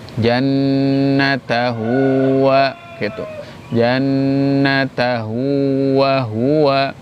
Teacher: mad pada ha dibaca dua harokat atau disebut dengan qasiroh itu kalau di depan huruf ha-nya tidak ada hamzah.